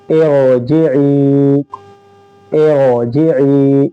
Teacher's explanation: یہاں پر رائے ساکنہ سے پہلے زیر ہے پھر بھی ہم یہاں پر را کو پر پڑھیں گے، یہ ایک استثنائی صورت ہے۔